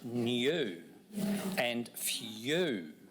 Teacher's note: So in fact, in these words, we hear a slight y sound, new, and few.